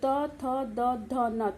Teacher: ता वर्ग का जब हम व्यंजनों का हम उच्चारण करते हैं तो त, थ, द, ध, न, तो जो हमारे जीभ है वो हमारे दांतों को बार बार छूती है और इन वर्णों का उच्चारण होता है।